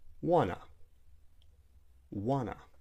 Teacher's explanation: instead of saying want to, we might delete the T and say wanna